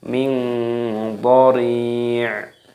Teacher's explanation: roknya dipanjangkan 2 ketukan dan dimatikan huruf ainnya